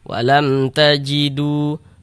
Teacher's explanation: Ha, bukan huruf ba, bukan huruf mim. Hukumnya izhar syafawi. Baca jelas tak berdengung. Walam tajidu du dibaca panjang.